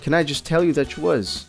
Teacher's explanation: there's a combination of the letters t and Y which can be pronounced with a CH sound at the end like CH that CH so the entire sentence